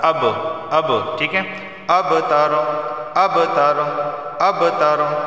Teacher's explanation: با جو ہے حرف قلقلہ ہے، یہاں پر آواز مخرج سے ٹکرائے گی